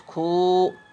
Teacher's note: کھے واو الٹا پیش کھو، الٹا پیش کی آواز یہ الٹا پیش پہچان کے لیے بچوں کے لیے لگا دیتے ہیں، ورنہ تلفظ اپنے ہی اعتبار سے پڑھا جاتا ہے۔ تو کھو کی آواز جو ہے لمبی ہو رہی ہے، یہ معروف واو کی علامت ہے۔